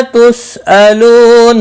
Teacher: سین ساکن کو ہلانا نہیں. لو واو مدہ ہے، ایک الف کے برابر کھینچ کر پڑھیں گے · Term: الف مدہ